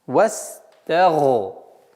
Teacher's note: Та нужно звук до конца произносить с огласовкой фатха, а потом переходить на твердый звук, звук гайн.